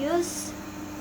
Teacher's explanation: sinnya punya sifat sofir, ada desisannya dan ada anginnya